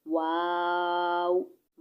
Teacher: वाव दोनों होठों की गोलाई से अदा होता है